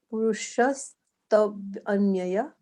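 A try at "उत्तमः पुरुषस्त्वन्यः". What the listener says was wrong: It's not Anyaya, it's Anyah. Yeah, because you see that H at the end of it in the English text.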